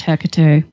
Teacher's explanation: most commonly it is the emphasis on that first syllable